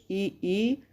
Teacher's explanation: हमारी जिह्वा उठकर तालु को टच करती है, तालु को छूती है। और ई बोलते हैं तब तालु को टच करने का प्रयास करती है।